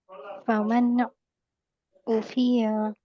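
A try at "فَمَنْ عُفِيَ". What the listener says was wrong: और या खींचना नहीं है, यहाँ पे हरकत है ना मैन। फमन उफिया, उफिया उफिया, जल्दी पढ़िए।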